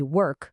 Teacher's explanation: O segredo é o seguinte: o que define o som do ED é o som final do verbo no presente. Se o verbo termina num som surdo, que não vibra as cordas vocais, como o K de work, o ED soa como T.